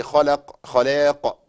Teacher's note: بقوه اقل من المشدد، ده بيسمى المرتبة الثانية من مراتب القلقلة